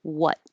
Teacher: when you stop the air flow for what the tongue comes to the front and blocks the air flow completely what and then when you have a y coming up next